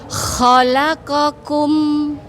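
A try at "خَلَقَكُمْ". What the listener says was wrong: Khalaqakum, enggak ada hamznya, enggak ada qa-nya, tapi khalaqakum.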